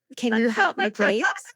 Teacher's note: Just stress help and please.